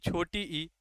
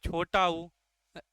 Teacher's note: इनके उच्चारण में मुख लगभग पूरा बंद होता है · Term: संवृत स्वर